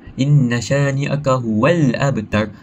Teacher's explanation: Kita perlu membaca lam dengan jelas yakni izhar perlu perdengarkan huruf lam tersebut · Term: alif lam qamariah